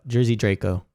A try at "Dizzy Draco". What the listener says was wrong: You said Drizzy Draco. It's Dizzy Draco.